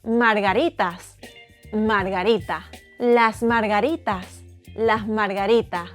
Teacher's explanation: we eat the S at the end of words and aspirate them if they are before a consonant